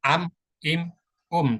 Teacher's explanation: pengucapan huruf mim dan nun sukun ya dia punya sifat tawasud ya sehingga ketika sukun dia tidak berhenti suaranya